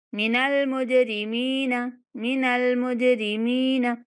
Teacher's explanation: यहाँ जिम साकिन है तो हमने इसके ऊपर कलकला करना है। इसको थोड़ा सा हिला कर पढ़ेंगे।